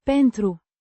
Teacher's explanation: with the stress on the first syllable